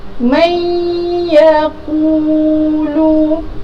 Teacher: Jadi cara bacaannya adalah bunyi nun mati ini akan dimasukkan ke dalam huruf ya, dengan dengung, 2 harakat. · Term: idgham bi gunnah